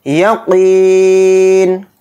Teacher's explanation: یقین، قاف کے ساتھ یا مدہ ہے تو قاف یا زیر قی کو کھینچ کر پڑھیں گے، قاف کو یہاں پر موٹا پڑھیں گے، نون کے نیچے زیر ہے تو زیر نہیں پڑھیں گے، نون کو ساکن بنا کر پڑھیں گے آیت ہونے کی وجہ سے۔